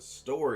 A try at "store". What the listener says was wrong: Store. Just the store, bro, not the store E. You said story.